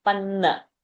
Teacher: chasya is long viva those two are short panna short but pa will be having a pressure panna because double na is there